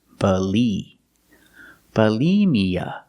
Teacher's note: for the first syllable use the short uh second syllable use the long e like green beans Bali Mia put the stress on the second